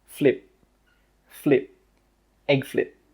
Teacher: With that final P sound, we stop the air from coming out.